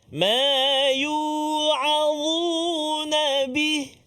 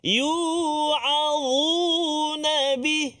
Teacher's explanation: huruf dha hujung lidah kita keluar sedikit bila kita sebut